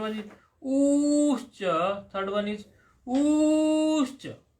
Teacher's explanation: a short u, then a long u, and further elongated u are together called va.